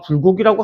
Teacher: 두 입술 소리니까 입술을 부딪혀서 소리 내라